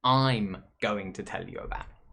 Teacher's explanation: combining the i and the m is something that native speakers do we drop that vowel sound